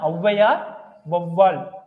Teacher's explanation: சொற்கள்ல முதல்ல வரும்போது என்னவாகுது ரெண்டு மாத்திரையிலிருந்து குறைஞ்சு ஒன்றை மாத்திரையா ஒலிக்கும் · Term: அவகார குறுக்கம்